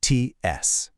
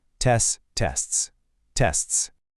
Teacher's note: Now for that ending, TS. Your tongue has to do this little tap for the T right before the hissing S sound.